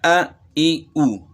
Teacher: یہ جو ہے نا حمزے کی آواز ہے، یہ گلے کی آخر سے نکل رہی ہے